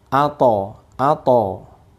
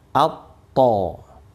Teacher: Tapi kalau ada tasydidnya jadi double. T-nya double. Atto. Ya, ini sebagai contoh pembacaannya itu bukan ato to, bukan gitu maksudnya ini ya, maksudnya adalah di double aja, atto, jelas ya.